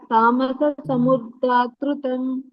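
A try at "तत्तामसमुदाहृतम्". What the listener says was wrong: ಅಲ್ಲಿ ಒಂದೇ ಸ ಇರೋದು ಎರಡು ಸಲ ಇಲ್ಲ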